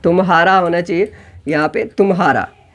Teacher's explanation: तुम्हारा में फटाफट तुम और हारा दोनों एक के बाद एक आ गया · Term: संगम